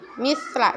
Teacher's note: ada sedikit bunyi desisan ya, bunyi S tapi tipis ya, kayak ada desisan misla. Nah, kemudian sin sukun ya, tipis sekali dengan sa.